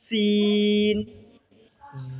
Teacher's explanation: सीन का मखरज, जो ज़ा का मखरज है वही सीन का भी मखरज है। ऊपर के चार दांत और नीचे के चार दांतों के किनारे पर ज़ुबान की नोक को लगाने से सीन अदा होते हैं।